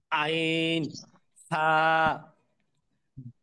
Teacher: দুই নম্বর মাখরাজ কণ্ঠনালী বা হলকের মাঝখান হইতে উচ্চারিত হয়